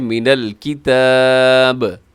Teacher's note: آخر میں با ہے، با حروف قلقلہ میں سے ہے تو آپ نے قلقلہ بھی کرنا ہے